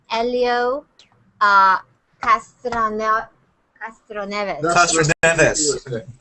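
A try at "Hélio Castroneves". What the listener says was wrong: You threw in some extra syllables. Castroneves. Just keep it simple. Don't try to roll your R's.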